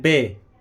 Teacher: बे यानी कि बे में दोनों होंठ मिलेंगे। बे जैसे हिंदी में लिखते हैं बा, बा अलिफ बे।